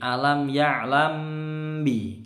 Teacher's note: Kalau mim sukun ketemu ba yang ini dengung. Ya, ini bacaan ikhfa syafawi.